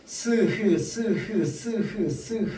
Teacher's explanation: 공기가 나오는 통로를 좁혀서 마찰시키면서 내는 소리 마찰음